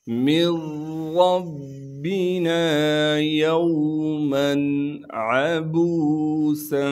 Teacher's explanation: عین کو صاف کر کے گلے سے نکالیں گے۔ با کے بعد واو مدہ ہونے کی وجہ سے با کو ایک الف کے مقدار کھینچیں گے، سین میں سیٹی ادا کریں گے، اور سین کو آگے ہم نے ملانا ہے، یعنی آگے ملا کر پڑھیں گے، تو سین پر اخفا یعنی غنہ کریں گے۔